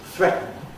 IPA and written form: ˈθretn̩ (threaten)